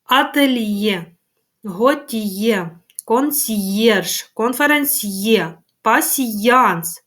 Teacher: тут Роздільна вимова чується звук й